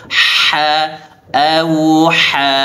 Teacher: ha tenggorokan bagian tengah disempitkan, dipaksa keluar anginnya